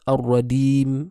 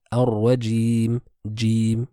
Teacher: le milieu de la langue avec ceux qui s'y opposent parmi le haut du palais